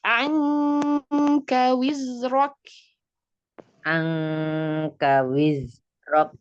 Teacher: K nggak boleh kebanyakan hams. Dia juga punya sifat syiddah.